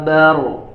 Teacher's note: Huruf ba-nya tipis, ya, jangan ba, baru ro-nya yang tebal dan qafnya.